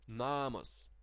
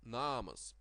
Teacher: The second A of this word is short and the first is long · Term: long vowel